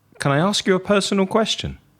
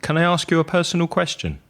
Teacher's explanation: obviously that's asking a question and my voice is dropping at the end